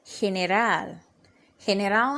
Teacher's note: our stress is going to fall on the last syllable